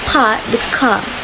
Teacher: New England dialect the r sound is often often dropped so park the car becomes part the car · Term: R sound is often dropped